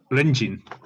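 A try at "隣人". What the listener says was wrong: no, with the I. Only an I, not the EI. Rinjin.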